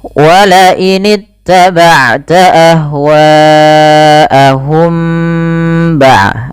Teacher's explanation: Cara membacanya adalah mimnya ditahan, sehingga di sini diwarnai dengan warna hijau agar kita menahannya. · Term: ikhfa syafawi